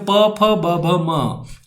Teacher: ओष्ठ है। प, फ, ब, भ, म में बोलने में होंठ टच होते हैं